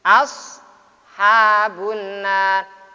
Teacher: as termasuk huruf tafkhim, dibaca tafkhim tebal